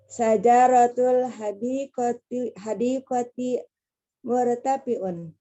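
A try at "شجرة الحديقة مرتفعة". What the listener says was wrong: Di syajarah, Bu, jimnya dikurangi, jimnya.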